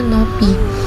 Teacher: penggunaan bunyi eng atau ng yang seharusnya disuarakan menjadi n saja